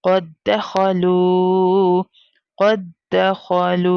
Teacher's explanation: क़ाफ दाल दाल फतहा क़द। अब हमें again first दा को साइलेंट कर देना है और क़ाफ को डायरेक्टली दाल के साथ मिलाना है। क़द जस्ट हिज्जे करते वक्त हम कॉल करेंगे, अदरवाइज प्रोनाउंसिएशन में वो साइलेंट लेटर साइलेंट ही होगा।